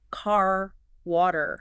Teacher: You still want to keep that same strong R sound, even when it's in the middle of the word.